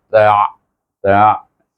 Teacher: Ta daripada antara gigi ta tu dekat sini, antara gigi kacip dengan gusi, tengah-tengah betul ta itu. Kita gabung dengan ain yang tengah, bunyinya ta, ta, dot, du, moncong sedikit baris depan.